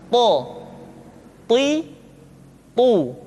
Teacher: ketika to diucapkan, suara kita terdengar menebal.